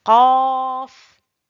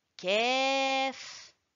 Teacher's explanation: Le qaf est une lettre emphatique. La lettre kef, aussi de l'élévation du fond de la langue vers le palais, mais légèrement en dessous du qaf, du point du qaf.